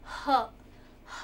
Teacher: ग्लॉटल वो साउंड्स होते हैं जो आपके बिल्कुल गले के ठीक नीचे से निकलती है. जैसे कि ह जो आवाज़ है वो आपकी ग्लोटल है.